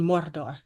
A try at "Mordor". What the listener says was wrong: you gotta roll your R's.